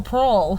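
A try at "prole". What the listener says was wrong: There's no A. Parole is parolee.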